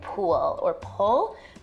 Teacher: L vocalization, so that's an L turning into a vowel in a word like pool or pull